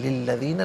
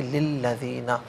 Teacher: لی علیحدہ، الذین علیحدہ، ملا کر پڑھیں گے للذین، لام کے نیچے زیر ہے، اس سے الذین کے لام کے ساتھ ملائیں گے، درمیان میں سے الف یعنی حمزہ کو حذف کیا جائے گا